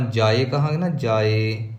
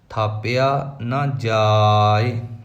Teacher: ਜੱਜੇ ਨੂੰ ਕੰਨਾ ਲੰਬਾ ਕਰਾਂਗੇ, ਈੜੀ ਸਿਹਾਰੀ ਛੋਟੀ ਮਾਤਰਾ ਹੈ, ਬੋਲੀ ਜਾਵੇਗੀ